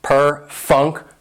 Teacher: perfunctory has 4 syllables and the stress is on that second syllable, that funk, perfunctory.